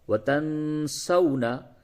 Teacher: نون ساکن کے بعد سین ہے، اخفا ہوگا